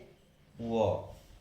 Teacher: दंत और ओष्ठ से व, इसीलिए इसे दंतोष्ठ कहा जाता है